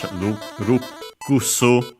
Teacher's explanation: Notice also, by the way, the doubling of the consonant, unlike in English, rukusu. The usual also U of ku, barely heard if at all because it's written in voice consonants.